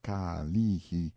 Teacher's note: pronounced Ka-lee-hi, stress on the second syllable